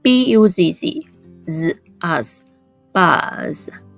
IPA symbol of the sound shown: z